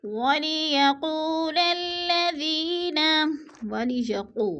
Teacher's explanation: قوف پہ وہ مدہ ہے، وہ مدہ کو ہم نے کھینچ کر پڑھنا ہے